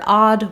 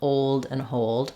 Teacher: that open a it's not rounded you don't want any kind of old U any rounding there but just an open a sound